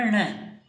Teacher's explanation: न का उच्चारण स्थान एक तो नासिका और दूसरा हो जाएगा दंता।